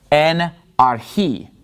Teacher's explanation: the accent is on the last syllable in this word archi